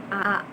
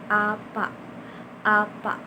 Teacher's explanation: A itu dibentuk dikeluarkan dengan mulut yang terbuka lebar dan lidahnya itu dalam posisi netral.